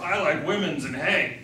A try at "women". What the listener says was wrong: Tell them you're taking liberty and it's not pronounced women's, it's just women, but you're doing it to be in character.